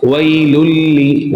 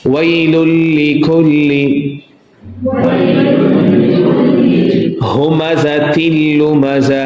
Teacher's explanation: we will merge the lam sound to the next lam sound, wailulli, and definitely there is no ghunna, because lam sound not let voice go to the nasal. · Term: Idgham without ghunna